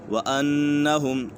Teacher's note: نون مشدد ہے، نون مشدد میں ہمیشہ غنہ ہوتا ہے